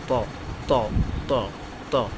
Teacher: জিহ্বার আগা সামনের উপরের দুই দাঁতের গোড়ার হতে উচ্চারিত হয় ত।